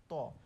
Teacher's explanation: আমরা যখন ত উচ্চারণ করি, আমাদের জিভের ডগাটা কিন্তু দাঁতের সাথে লাগছে। দেখেন তো, ত আমাদের দাঁতের আগার সাথে লাগতেছে না?